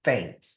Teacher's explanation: you're going to be pushing your tongue out a little bit and you're almost biting your tongue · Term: hard th